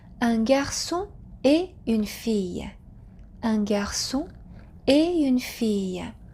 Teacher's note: So there is no liaison between et and une.